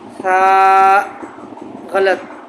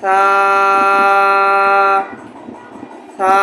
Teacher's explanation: آخر میں ہا کی آواز پیدا نہ ہو، اسی طرح حمزہ کی آواز پیدا نہ ہو